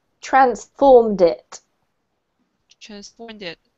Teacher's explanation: so just basically connect the D with I